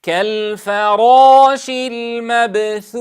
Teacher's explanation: نتنبه عند حرف الثاء وهو مهموس بأن نصوت من المخرج، فيخرج صوت الثاء من طرف اللسان مع أطراف الثنايا العليا، فنحذر من نفخ الخدين عند نطق الثاء الساكنة، كما يحصل خطأ عند البعض فيقول المبثوث، فينفخ الخدين عند النطق بحرف الثاء الساكن أو المتحرك، وهذا خطأ.